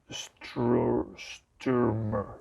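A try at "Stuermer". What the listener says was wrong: There's no R in there. Sturmer.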